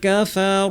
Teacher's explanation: কাফার নাতে টান নাই। না কাফারু না বলে সরাসরি কাফে চলে যাব।